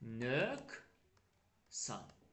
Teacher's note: Fikir verin, burada q hərfi kar samitdən əvvəl gəldi. Q hərfi kar samitdən əvvəl gəlsə, bu səfər q yazılacaq, k deyiləcək.